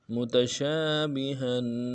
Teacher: متشابہن، بہن میں ہا کو کے اوپر تنوین ہے، تنوین کو غنہ کر کے پڑھیں گے